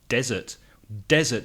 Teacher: has the stress on the first syllable